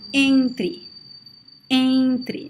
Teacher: If you touch your nose, you see that it vibrates a lot when you say the word entre. If you say just the open it doesn't vibrate at all. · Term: nasal sound